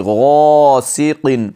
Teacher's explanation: الف حرف مدہ میں سے ہے، 1 الف کی مقدار کھینچیں گے